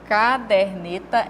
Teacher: a sílaba tônica dela é aqui no der e não no car